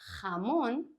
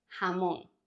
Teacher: depending on the region it's going to sound stronger like in hamon or softer hamon